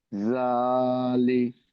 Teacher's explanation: জাল খাড়া জাবর জা, লাম জের লি। লাম জের লি ওখানে টান হচ্ছে না, শুধু জালে টান হচ্ছে।